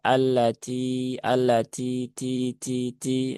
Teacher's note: Alladzi ya dinya dibaca dua harakat ya karena dia ada ya sukun setelah kasrah dan cukup dua harakat. Ingat-nya juga ada hamsnya, maka keluarkan hamsnya sedikit saja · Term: hamesnya